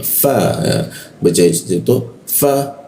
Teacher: Fa itu lidah bagian bawah itu bertemu dengan gigi.